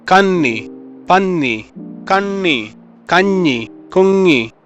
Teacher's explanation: because इस column के सारे sounds are nasal sounds, the Malayalam accent might seem a little nasal in comparison to other languages